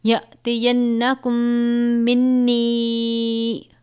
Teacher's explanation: یَأْتِینَکُم، میم ساکن کے بعد دوسری میم ہو تو ادغام شفوی کا قاعدہ لگتا ہے، یعنی غنہ کر کے پڑھتے ہیں